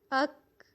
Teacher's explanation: لیکن کاف کو جب ہم ساکن کریں گے تو اس کی صفت ہے صفت شدت، یہ اس کی اسپیشلٹی ہے شدت۔ آواز سختی کے ساتھ بند ہوگی لیکن قلقلہ نہیں ہوگا